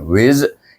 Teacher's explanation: Sini bunyinya wiz, berdesirannya kuat. Seperti unggas bunyinya. · Zai itu dia lebih safir daripada zal.